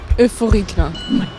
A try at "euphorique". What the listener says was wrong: Il n'y avait vraiment aucune adéquation entre l'adjectif et ton attitude. T'as dit comme ça, t'as dit vraiment euphorique. Là, c'est la fête.